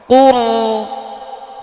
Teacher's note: এখানে আওয়াজটা চালু রাখতে হবে, যেমন কুম আওয়াজটা লাস্টে অফ হয়ে গিয়েছে, রয়ের আওয়াজটা অফ হবে না, এটা জারি থাকবে আওয়াজটা, যেমন কুর। কুল।